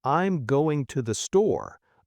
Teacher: in the sentence, I'm going to the store, the words going and store are the melody. But I'm tothe, those are background. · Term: stressed words